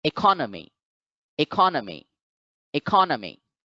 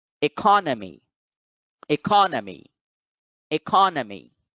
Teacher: In this representation, you find that the apostrophe, the stress mark, is over the second syllable. So therefore, the second syllable, ka, is now the accented syllable.